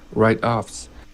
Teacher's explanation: I would stress the right instead of the offs.